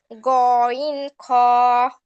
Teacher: 3 নম্বর মাখরাজ হলকের শেষ ভাগ হইতে